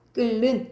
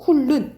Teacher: 리을이 만났을 때 니은이 리을의 영향을 받아서 리을로 바뀌면 유음화 현상이라고 합니다.